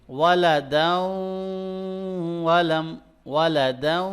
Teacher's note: غنہ بھی ہو رہا ہے اور ان دونوں کو مرج بھی کر رہے ہیں، ادغام بھی ہو رہا ہے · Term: ادغام ود غنہ